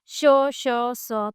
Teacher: फिर आता है ऊष्मी व्यंजन। इन वर्णों के उच्चारण में हवा मुख के कुछ भागों को स्पर्श कर रगड़ खाती निकलती है।